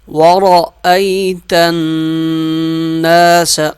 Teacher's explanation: را موٹا پڑھا جائے گا،